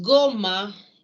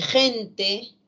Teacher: Entonces, goma y gente evidencian que la misma letra inicial, fonológicamente, en goma, es G, oclusiva velar sonora, y en gente, es una fricativa velar sorda